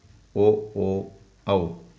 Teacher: ಕಂಠ ಮತ್ತು ತುಟಿಗಳ ಸಹಾಯದಿಂದ ಹುಟ್ಟುವ ಅಕ್ಷರಗಳನ್ನು ಕಂಠೋಷ್ಟ ಅಕ್ಷರಗಳು ಎನ್ನುವರು